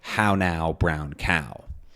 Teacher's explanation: ow is very, very fronted to become ow instead of ow.